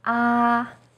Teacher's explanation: first tone is is high and steady